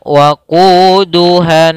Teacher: melafalkan nun tasydid sama itu hukum bacaannya gunnah, ditahan. Maka cara membacanya waquduhan, ditahan n-nya.